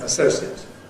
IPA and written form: əˈsəʊsiət (associate)